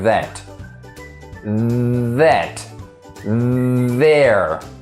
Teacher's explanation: it's like a buzzy sound the vocal cords vibrate they move very quickly you can feel by touching your throat like that that there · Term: voiced sound